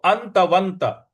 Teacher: अ के बाद जो न है उस पर हमको आघात देना है और व के बाद जो आधा न है उस पर भी हमको आघात देना है